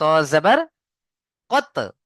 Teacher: কফ যেখান থেকে উচ্চারণ হয় এই কফের উপরে যদি সাকিন আসে তাহলে এই মাখরাজে ধাক্কা দিয়ে তার আগের অক্ষরের সাথে মিলিয়ে পড়তে হয় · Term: কলকলা